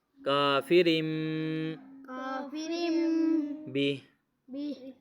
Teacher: رم یہاں پہ اقلاب ہو رہا ہے, تنوین کے بعد با آ گیا, اس با کی وجہ سے یہاں پہ اقلاب ہو رہا ہے, نون کی آواز می میں پڑھی جائے گی, یعنی کہ رن پڑھنا تھا رم پڑھ رہے ہیں, رن اور رم, رم میں منہ بند ہو جاتا ہے